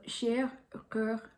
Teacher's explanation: there's a little nasal sound at the very end